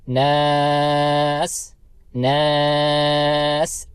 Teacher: ناس میں نون کو ہم کھینچیں گے کیونکہ اس کے ساتھ الف ہے، حرف مدہ میں سے ہے، اور اس کے بعد سین ہے. سین کی آواز سیٹی کی آواز نکالنا ہے، اور اس لفظ کو ہم 3 سے 4 الف کی مقدار کھینچ سکتے ہیں کیونکہ اس کے اوپر ہم وقف کر رہے ہیں.